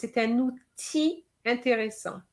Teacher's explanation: The L of outil is not pronounced.